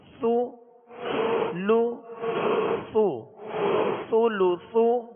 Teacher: اس میں سختی نہ ہو، سا کو نرمی کے ساتھ اور باریک پڑھیں گے